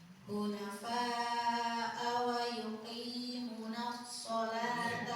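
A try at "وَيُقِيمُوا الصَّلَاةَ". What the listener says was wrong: Gak ada nunnya. Gak ada nunnya. Wa yuqimus.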